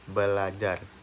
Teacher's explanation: bunyi R pertama didisimilasikan dengan bunyi L sehingga menjadi belajar